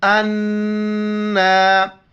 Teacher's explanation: امزہ کو نون کے ساتھ ملائیں گے. نون پر چونکہ شد ہے غنہ کریں گے اور کڑا زبر کی وجہ سے ایک الف کی مقدار اوپر کھینچنا ہے.